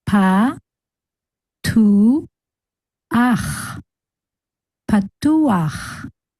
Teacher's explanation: we will pronounce the vowel first and then the chet. So we will have ach at the end of the word instead of cha.